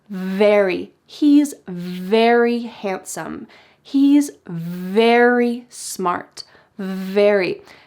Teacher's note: if you want to say very, your top teeth are on your bottom lip